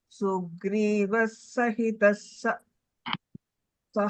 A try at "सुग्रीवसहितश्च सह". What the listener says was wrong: Sugriva, there is no is sound over there. Sugriva sahitascha saha.